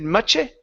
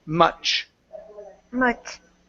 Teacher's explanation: there isn't a vowel after the CH.